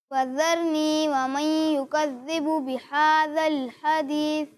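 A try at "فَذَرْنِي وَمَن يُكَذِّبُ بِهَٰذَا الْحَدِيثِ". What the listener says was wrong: یہاں غنہ کی مقدار پوری نہیں کی. ٹھیک ہے، تو غنہ کی مقدار آپ نے پوری کرنی ہے. دوسرا یہ فذرنی اس طرح نہیں پڑھیں.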